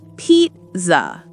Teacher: The A at the end is a schwa.